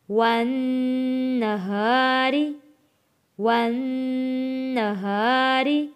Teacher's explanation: نون کے اوپر تشدید ہے، غنہ ادا کریں گے